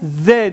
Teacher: Yani dilimi iki dişimin arasından, üst alt dişlerimin arasından çıkararak telaffuz edebiliyorum ve Z sesini çıkarıyorum. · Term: peltek